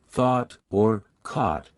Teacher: British RP tends to have rounded vowels especially in words like thought or caught which are pronounced with a rounded sound.